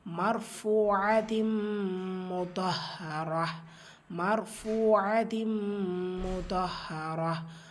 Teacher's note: மர் ஃபத்ஹாவை தொடர்ந்து ரா சுக்கூன் வந்திருக்கு, ரா சுக்கூனை வல்லினப்படுத்தி ஓதணும். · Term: பில் குன்னா